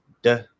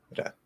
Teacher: The flap D, the basic way to make it is tongue comes up and taps around where the D would usually be placed, which is not on the teeth, it's behind the teeth. Okay, not too far back where mouth starts going up here.